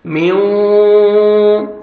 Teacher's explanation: حروف یرملون جو ہیں ان میں سے واو آ رہا ہے تو ادغام کریں گے غنہ کے ساتھ، میوں، نوز میں ساؤنڈ لے کے جائیں گے، میوں ورا، را کو زبر ہے، را کو موٹا کر کے پڑھنا ہے.